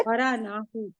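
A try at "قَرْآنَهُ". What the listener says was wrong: और झटका देंगे, यहाँ अलिफ पे जज़म आएगा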